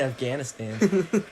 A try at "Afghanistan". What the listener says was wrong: There's not a D at the end.